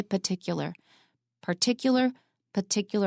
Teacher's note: particular is one of the very few words in American English where you don't have to pronounce the first R so usually we pronounce all of our arse in English but